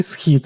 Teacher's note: Але не пом'якшується. У слові «схід» «х» – це пом'якшений задньоротовий, а не зубний. Тому він пом'якшуватися не буде.